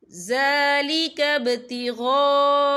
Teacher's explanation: وَمَن يَفْعَلْ ذَلِكَ ابْتِغَاءَ، یہاں دیکھیں ذَلِكَ ابْتِغَاء، یہاں خالص سے پہلے زبر ہے اور اس پر مد بھی ہے، یہ مد جو ہے مد متصل ہے، اس کی مقدار 4 حرکت کے برابر ہے، تو ہم اسے 4 حرکت کے برابر کھینچ کے پڑھیں گے